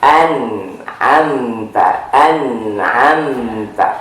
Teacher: Nah nunnya ditekan sambil masuk ke hidung sedikit.